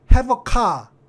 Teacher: 뒤에 있는 그 모음이 그 첫 단어의 자음 뒤에서 가서 붙어서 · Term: 연철